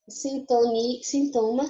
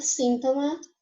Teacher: Que a gente troca a sílaba tônica. A gente fala mais forte em português, no caso de sintoma, a segunda sílaba, o to. Já em espanhol, é um síntoma. A gente faz mais força na primeira